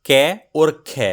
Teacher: आप पाएंगे खे में आपके हाथ पर ज्यादा हवा लगती हुई महसूस होगी। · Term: महाप्राण